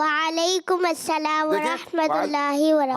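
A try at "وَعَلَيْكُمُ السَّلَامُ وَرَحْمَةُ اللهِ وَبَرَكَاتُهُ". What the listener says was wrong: थोड़ा सा और बेहतर करें, मीम के ऊपर जबर नहीं, वालेकुमुस्सलाम, क्या है?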